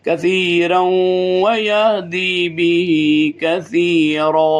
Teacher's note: کثیرا نون آگے واو یرملون کی ادغام کریں گے